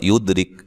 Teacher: یہاں یہ دال کو ہلانا ہے، دال قلقلہ ہے، ٹھیک ہے، اس کو ہلا کے پڑھیں گے